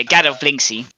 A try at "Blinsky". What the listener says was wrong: It's the S comes before the K, so it's Blinsky.